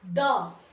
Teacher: जब हम द बोल रहे हैं तो जो हमारी जीभ का आगे वाला हिस्सा है वो तालु को भी टच कर रहा है और दांतों के बेस को टच कर रहा है